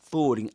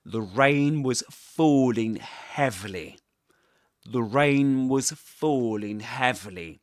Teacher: he lengthens the vowel sound in falling, falling. Actually, this is a long vowel, but it's quite noticeable.